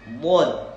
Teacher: kita ngucapin dhad dari mana? Hafatai lisani mal adras namanya. Samping lidah, mau belah kiri atau belah kanan atau dua-duanya